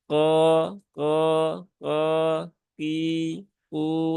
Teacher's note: Maka untuk mengucapkan huruf qaf itu disertai dengan naiknya pangkal lidah. Dan tidak perlu ada suara tekleknya itu sampai berlebihan ya menjadi tus ko, ko.